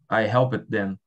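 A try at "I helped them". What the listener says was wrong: Agora fecha com o som de M no final. I help them.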